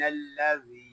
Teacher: یہاں ذال کو ہم ایک الف تک کھینچ کے پڑھیں گے کیونکہ یہاں یا مدہ ہو رہا ہے